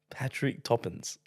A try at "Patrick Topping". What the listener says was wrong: They're not Toppins. Patrick Topping. Topping. Topping. No S. With a G at the